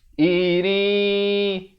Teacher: Asalnya ra tanwin di bawah bunyi rin. Tapi bila datang ya, masuk beserta dengung jadi iri.